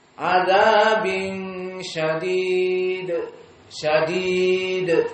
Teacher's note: Maka disebutkan syadid di saat kita berhenti pada dal dari huruf qalqalah. Maka di sini qalqalah kubra karena kita waqaf. Maka qalqalahnya jelas sekali. Adzabin syadid, syadid jelas.